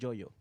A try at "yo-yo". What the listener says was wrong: With JoJo? No, you said a Joe-Yo or something like that. Like he did like Spanglish version of it.